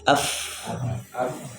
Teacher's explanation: napas mengalir ya dan tidak ada getaran tidak ada getaran